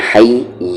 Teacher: ہا کا مخرج آپ کو مڈل تھروٹ سے بولنا ہے